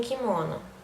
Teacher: a redução das átonas finais, como em kimono